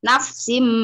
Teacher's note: Yauma tajidu kul nafsim tanwin bertemu mim didengung